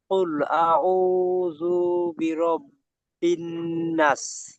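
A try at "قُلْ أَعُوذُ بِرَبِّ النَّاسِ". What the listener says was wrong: নাস নয়, নাস নয়। কি হবে? মাদ্দা আরিজ ওয়াকফি, আলিফ মাদ্দা দাঁড়াচ্ছি আমরা, টান দিয়ে দাঁড়াতে হবে। কুল আউযু বিরাব্বিন নাস।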